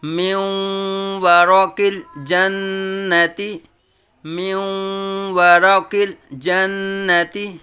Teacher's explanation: نون ساکن کے بعد حروف یرملون میں سے واو آیا ہے تو نون اور واو کو مدغم کریں گے، نون اور واو میں ادغام کریں گے، میوں۔